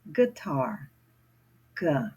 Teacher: G is coming from the back of my throat.